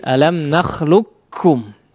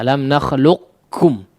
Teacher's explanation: seluruh sifat huruf qaf tidak terlihat lagi atau masuk kepada huruf Kaf semua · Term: idgham Kamil